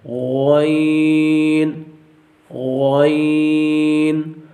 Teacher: غین یہ بھی جو ہے وہ حروف حلقی میں سے ہے اور یہ حلق کے جو ہے وہ اوپر والے حصے سے ادا ہوتا ہے. اور دوسرے نمبر پر یہ بھی جو ہے وہ حروف مستعلیہ میں سے ہے، اس کو بھی جو ہے وہ پر پڑھا جائے گا.